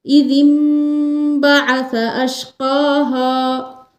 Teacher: تو یہاں نون ساکن ہے، نون ساکن کے بعد جب با ہو اور اس کے ساتھ چھوٹی سی میم ہو تو اس وقت اس میم کو پڑھیں گے، یعنی حمزہ زیر ای ذال میم زیر دم پڑھیں گے، نہ کہ ذال نون زیر دن نہیں پڑھیں گے. نون کے بدلے میم کو پڑھیں گے یہاں اقلاب کے اندر.